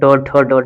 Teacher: मूर्धा आपका चला जाएगा ट, ठ, ड, ढ में